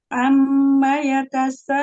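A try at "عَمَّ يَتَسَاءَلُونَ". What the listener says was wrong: Ya, mim tasdid gunahnya guna akmal matakun. Tingkatan guna yang pertama. Panjangin gunahnya, lamain lagi. Amma, amma. Panjangkan.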